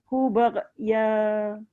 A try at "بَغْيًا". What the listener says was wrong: Baghya. Tak boleh qalqalah. Baghya. Yang bunyi ra tu buang dia. Baghya.